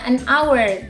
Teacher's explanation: h di sini ini is not pronounced, jadi tidak diucapkan ya. Jadi lebih langsung ke huruf O-nya, an hour.